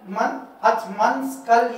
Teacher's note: नून की आवाज को छुपा कर गुन्ना के साथ पढ़ना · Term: इख्फा